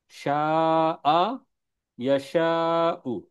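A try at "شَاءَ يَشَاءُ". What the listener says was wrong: Very good, মাশাআল্লাহ, good, দারুন।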